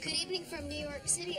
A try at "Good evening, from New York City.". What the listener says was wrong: It's not good evening from New York City. It's good evening, comma, from New York City. You don't pronounce it, but you acknowledge it. you didn't.